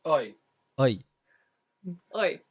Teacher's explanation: In the West Country accent, this is more like oi. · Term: I diphthong